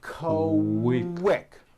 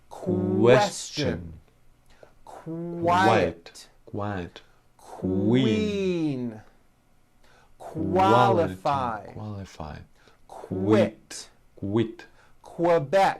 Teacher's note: Q sounds are made with the k sound and the W sound put together